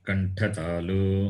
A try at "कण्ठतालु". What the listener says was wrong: कण्ठतालु only, not कण्ठतालुः.